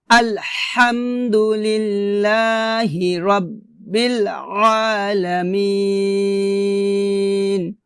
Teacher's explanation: এখানে এক লিপ টান হবে এবং আইনটাকে গলার মাঝখান থেকে চাপ দিয়ে উচ্চারণ করতে হবে